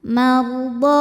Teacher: Ra sukun didahului fathah dibaca secara tafkhim. Ya, kita tebalkan, pangkal lidah kita angkat.